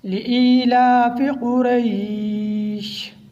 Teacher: جب وقف کریں گے تو آخر میں شین کی آواز آئے اور لام کو موٹا نہیں پڑھنا، مجہول نہیں پڑھنا۔